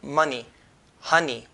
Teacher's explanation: Money, honey, we touch the n with the roof of the mouth.